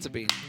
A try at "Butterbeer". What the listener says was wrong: Butterbeer, not bean. Beer.